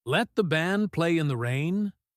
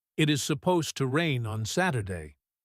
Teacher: The contrast between the fast, Let the band play in the rain, and the slow, Supposed to rain on Saturday, highlights the urgency.